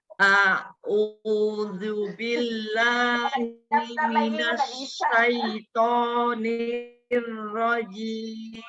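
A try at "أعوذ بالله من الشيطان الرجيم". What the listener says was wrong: Baik Ibu, sini sempurnakan lagi dohmanya. A'udzu billahi. A'udzu billahi.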